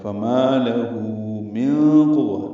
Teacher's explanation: نون ساکن کے بعد قاف آنے کی وجہ سے اخفا ہے